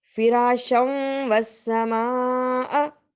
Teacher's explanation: فراشم میں ہمارے پاس ادغام ہو رہا تھا اور سما کے اوپر ہم نے بڑی مد دیکھی